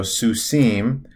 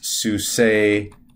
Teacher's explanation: a a transition to the construct so instead of susim becomes you drop the m and you lengthen the vowel so it's su say